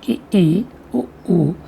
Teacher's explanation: ये वे स्वर हैं जिनके उच्चारण में मुख लगभग बंद रहता है